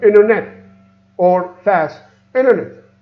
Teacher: internet we remove the T it's become inner net